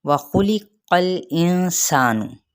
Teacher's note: वाव होंठों की ना तमाम गुलाई के साथ। खा हुरूफ मुस्तालिया में से है। · खा हुरूफ मुस्तालिया में से है। क़ाफ के ज़बर को लाम के साथ मिलाएंगे लेकिन हिलाएंगे नहीं। इंसानु, नून पे फ़ाई हकीकी, सा पे मद सिबिल अलिफ और नून की पेश को लंबा नहीं करेंगे।